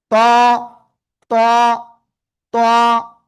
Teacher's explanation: জিহ্বার আগা, উপরের দুই দাঁতের গোড়ায় লাগান, লাগিয়ে একটু মোটা আওয়াজে অক্ষরটা উচ্চারণ করতে হবে।